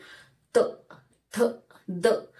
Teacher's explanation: जीभ आणि खालचे जे दात आहेत त्याला स्पर्श होऊन यांचं उच्चारण होतंय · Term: दंत्या